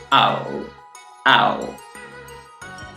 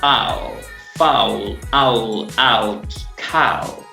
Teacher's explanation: No es u, no es au, sino que es una u con un poquito de, así, sazonamos con un poquito de o y decimos au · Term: diptongo